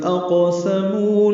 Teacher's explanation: اقسموا قاف ساکن پہ قلقلہ ہے، مو و مدہ ہے.